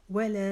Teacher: لا کو 4 الف جتنا لمبا کھینچیں گے